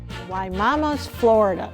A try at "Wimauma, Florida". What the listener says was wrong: Not Mama. You said Wimauma's Florida with an S.